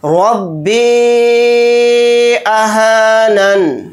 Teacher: रब्बी अहानन, नून के नीचे ज़ेर है तो ज़ेर नहीं पढ़ेंगे, नून को साकिन बनाकर पढ़ेंगे हालत वक्फ़ में